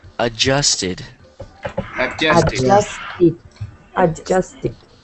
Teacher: you don't really hear the first D cuz it sounds like it doesn't exist